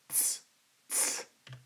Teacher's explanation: Next, we have the voiceless dental fricative, this German TS sound, so ts sound.